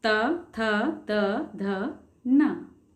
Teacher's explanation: तो त वर्ग के जो वर्ण हैं उनका उच्चारण करते समय हमारी जो टंग है, हमारी जो जीभ है, वो हमारे दांतों से टच होगी। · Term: दंत्य